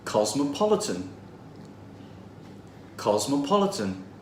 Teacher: it has four syllables and the third one is stressed